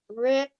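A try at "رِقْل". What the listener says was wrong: Okay, slight a jerk sound at the end, okay? Riql.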